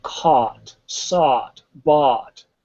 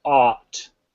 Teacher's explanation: it has that back of the throat ah